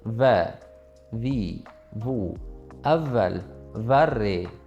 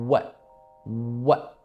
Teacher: Arab tilidagi wow lablarimiz to'lig'icha cho'chchayadi.